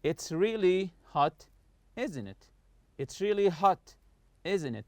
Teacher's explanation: I'm not raising my voice in the question tag here. I'm just I just want you to agree with what I say. · falling intonation, meaning the voice goes down when we know the answer and are just asking for agreement